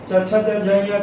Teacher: च छ ज झ ञ का उच्चारण स्थान तालु